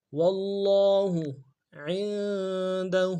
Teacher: عین کو نون کے ساتھ ملانا ہے، غنہ کریں گے